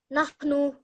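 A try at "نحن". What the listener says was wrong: Nahnu. Nahnu. That noon sound, make sure it's not longer. Like sometimes we all make that mistake. Because it's the last letter, we make it slightly longer.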